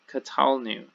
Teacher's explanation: And our first common plural here, we, this is katalnu, katalnu. So the center syllable gets that accent there. And the nu ending of anachnu, the first common plural pronoun, again shows up here in the first common plural of katal.